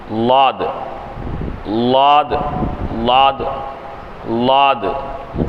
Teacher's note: மேற்கடவாய் பற்களுடன் நாவின் இரு ஓரங்களை சேர்த்து அழுத்தி உச்சரித்தல்